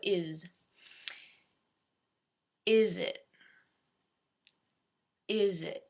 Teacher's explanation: So it's a little bit higher than the schwa, but it's not as high as I.